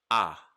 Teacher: it's still going to be ah but it's going to be a little shorter it's going to be a medium length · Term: shorter ah sound